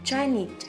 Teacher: Chinese, trọng âm rơi vào need